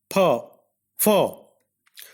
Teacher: Fa is a voiceless labiodental fricative.